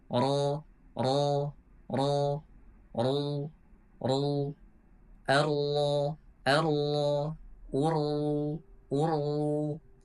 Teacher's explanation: Nah, ketika seseorang mengucapkan huruf ro, takrirnya harus berjumlah dengan 2 ketukan saja, tidak boleh lebih dan juga tidak boleh kurang. Jadi ketika seseorang mengucapkan ro dalam keadaan fathah, kemudian dhammah, dan juga ketika tasydid, itu harus jelas takrirnya. · Takrir itu adalah getaran, ya getaran atau pengulangan lidah dalam mengucapkan huruf ro. Jadi seperti itu namanya takrir.